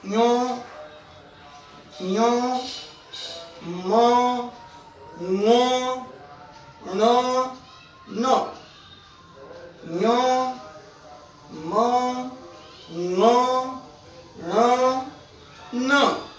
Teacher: ये पांचों की पांचों ध्वनियां नाक की सहायता से बोली जाती हैं। हालांकि अपने अपने वर्गों में इनके अपने अपने उच्चारण स्थान भी हैं। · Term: नासिक्य व्यंजन